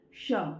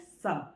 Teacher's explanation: और जब हमने बोला श, ये है तालव्य श, जब हमारी जीभ ऊपर तालु को छूती है, तालव्य श, श। ठीक है, जीभ ऐसे घूमती है और जब जीभ हमारी आगे ऐसे दांतों पर लगती है तब निकलता है स।